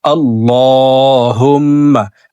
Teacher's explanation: দেখুন এইভাবে পড়তে হবে আল্লাহুম্মা। আল্লাহ শব্দের আগের হরফে জবর আসছে, এই কারণে এই লামকে ল বলে অর্থাৎ মোটা করে পড়ব। হুম্মা, হুম এখানে ওয়াজিব গুন্নাহ।